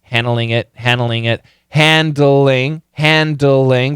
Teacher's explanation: But that N kills the D. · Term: Very weak D